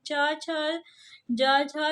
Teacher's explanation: च छ ये तालु से उच्चारित होता है। तो ये आपका तालव्य व्यंजन है।